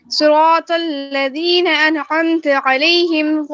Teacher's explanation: صاد کے نیچے زیر ہے تو اس کو ای کی آواز نکالنی ہے، اے کی آواز نہیں نکالنی